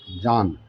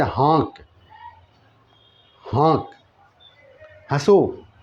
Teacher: ये गुन्ना जो होता है ये नाक से आवाज़ निकलता है, साफ नहीं निकलता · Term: नून गुन्ना